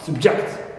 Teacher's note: second word which is subject here the word becomes verb and this change of stress position from first syllable to the second syllable is accompanied by reducing the first vowel in this word